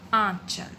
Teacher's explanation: आंचल में हमारे नाक से भी हवा निकली और हमारे मुंह से भी